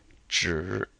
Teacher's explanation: Again, the I is just like the I we saw in is, s. And ZH is like the G sound as in gel, but with the tongue curled